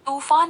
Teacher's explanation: जब आप तूफान कहते हैं तो यहाँ पर त में ज्यादा ऊर्जा खर्च हो रही है या फिर ज्यादा जोर पड़ रहा है